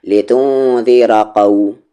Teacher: لتنذر کھینچنا نہیں ہے، اور را کو آگے قو کے ساتھ ملائیں گے، یعنی ایک ساتھ پڑھیں گے، یہاں پر رکیں گے نہیں.